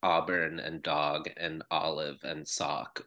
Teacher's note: in California English and most of the West Coast, speakers tend to pronounce auburn and dog and olive and sock with the same merged vowel sound.